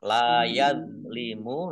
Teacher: La yazlimu, lam fathah alif juga mat tobi'i, panjang 2 harokat